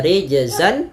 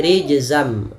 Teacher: nunnya diganti dengan mim dan kemudian Langkah kedua adalah kita tahan rijzam pada lafaz bacaan · Awalnya rijzan, ketemu mim menjadi rijzam, nunnya diganti dengan mim. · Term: idgham bi gunnah